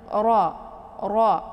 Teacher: Jadi ra-nya dibaca tebal ya. Cara bacanya ujung lidah terangkat ke langit.